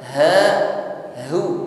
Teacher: Kita upayakan pengucapan kedua ha ini jelas keluar dari makhraj aqsal halqi, tenggorokan paling bawah, suaranya gema.